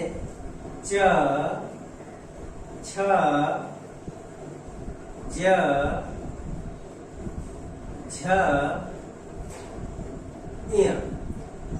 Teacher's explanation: च, छ, ज, झ, य, इन व्यंजनों का उच्चारण स्थान जो है तालव्य होता है